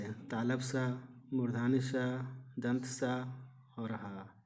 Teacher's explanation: जिन व्यंजनों का उच्चारण एक प्रकार की रगड़ से उत्पन्न गर्म वायु से होता है उन्हें ऊष्म व्यंजन कहते हैं